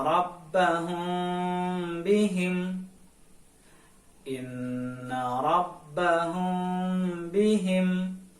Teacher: Sedangkan ikhfa syafawi menurut istilah ilmu tajwid adalah jika ada mim sukun bertemu dengan huruf ba, maka hukum bacanya disebut ikhfa syafawi. Lalu cara membacanya adalah harus dibaca samar-samar di bibir dan didengungkan